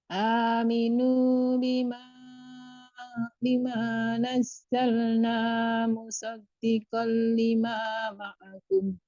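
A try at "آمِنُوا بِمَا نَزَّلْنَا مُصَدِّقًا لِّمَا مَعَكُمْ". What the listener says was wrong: Nah, di bima itu jangan terlalu panjang sama dua ketukan Bu ya.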